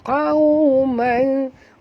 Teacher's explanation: tanwin baris dua di atas bertemu dengan lam, maka masuk tanpa dengung. Itulah nama hukumnya ya, idgham bila gunnah.